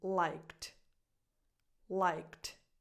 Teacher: And in this case, that final D sounds more like a T. It gets a softer T sound, liked, because you're coming from a K sound.